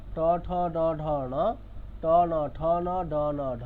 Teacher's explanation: ট ঠ ড ঢ যখন বলছি তখন জীবটা কোথা? মূর্ধাতে পিছন দিকে। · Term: ট বর্গ